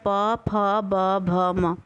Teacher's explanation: अब आप इसको बोल रहे हो, ये आपके ओंठ पे लड़ रहा है